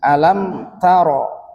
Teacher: ro berharakat fathah dia dibaca tebal ya